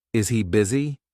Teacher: But we actually omitted sound H, and we have easy busy. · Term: linking